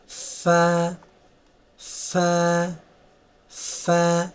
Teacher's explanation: দুইটা দাঁত নিচে ঠোঁটের উপরের সাথে লাগবে